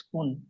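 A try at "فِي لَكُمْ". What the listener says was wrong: মিম দুপেশ কোথায় আছে? দুপেশ, দুপেশ নেই তো। কুম।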